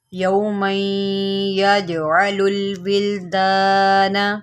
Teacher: جیم جو ہے حروف قلقلہ میں سے ہے اور اس کے اوپر جزم ہے، یہاں پر آپ قلقلہ کریں گے یعنی کہ جیم کو ہلائیں گے